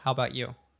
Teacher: he actually dropped the uh sound from about so he just said how about you which is very common